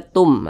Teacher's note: huruf mim jadi dibaca shawatum jangan dibaca Tun tapi dibaca Tum dimasukkan ke huruf mim dileburkan menjadi satu ke huruf mim Tum seperti itu nah kemudian didengungkanah digunahkan atau didengungkan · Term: idgham bhunah